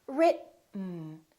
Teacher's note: produce it when we have a T followed by an N the T is held so we hold our tongue right here behind our upper teeth and we don't release it we smoothly just go directly to the end sound without moving · keep your tongue up don't release it let the air just come out through your nose for the n sound listen RIT mmm right let's try another word same thing T